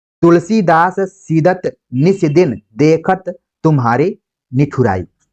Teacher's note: स द त तीनों क्या है? दंत उच्चारण स्थान से लिए गए हैं। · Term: श्रुत्यानुप्रास